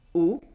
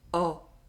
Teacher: In French, there are 2 O sounds. A closed one, O, and an open one, O.